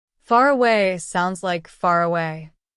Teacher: In some kinds of English, especially British English, the R sound at the end of a word connects smoothly to the vowel at the beginning of the next word.